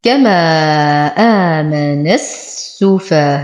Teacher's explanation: إذن فما اتصل أي المد المتصل أقوى من المد العارض فيؤخذ بالأقوى ويهمش الأضعف. إذن سنعتبره مدا متصل يمد بمقدار 6 حركات. إذن لو وصلنا سقط العارض وبقي فقط المتصل.